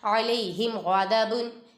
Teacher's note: ادھر میم ساکن کے بعد غائن آ رہا ہے، ادھر اظہار شفی ہوگا، ادھر غنہ نہیں کریں گے